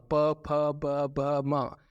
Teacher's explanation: होठ से आपका निकलेगा प, फ, ब, भ, म, तो इसको ओष्ठ्य बोलते हैं